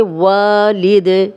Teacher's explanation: دال پہ جزم لگے گی اور کلکلا بن جائے گا